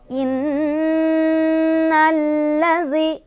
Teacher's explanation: Inna di sini ada gunnah musyaddadah karena ada nun yang bertasydid ya. Dibacanya berdengung. Dengungannya ditahan 2, 3 atau 4.